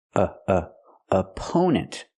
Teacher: The first syllable is a relaxed uh sound like cup and up.